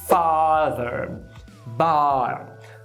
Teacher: A como em father, bar. Nome técnico, vogal baixa posterior não arredondada.